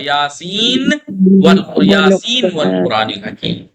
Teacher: دیکھیں یاسین، نون ہے آخر میں، سین یاسین. اب یاسین کے نون کو جب واو سے ملائیں گے تو ادغام نہیں ہوگا. کبھی آپ کرتے یاسین والقرآن الحکیم، یاسین نہیں، اظہار ہوگا یاسین والقرآن الحکیم.